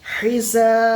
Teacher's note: আলিফ মাদ্দাকে এক আলিফ টান দিয়ে পড়ব।